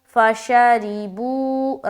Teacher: فَشَرِبُوا، فا زبر فا، شین زبر شا، را زیر ری، با وا پیش، بو، فَشَرِبُوا، را کو باریک رکھتے ہوئے پڑھیں گے اور بو میں واو مدہ کریں گے